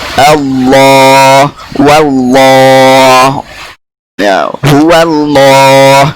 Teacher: Selanjutnya tufakhimul arabul lama biijma'in min lafdhil jalalah wa dzikra subiqa bi fathatin aw bi dhammah. Orang Arab mentafhimkan lam pada lafaz jalalah secara ijma' kesepakatan jika sebelum lafzul jalalah fathah atau dhammah.